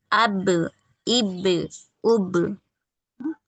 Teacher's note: اب ہلکا سا جھٹکا ہو رہا ہے نا، اب اب پوری طریقے سے آپ کے لپس چپک جاتے ہیں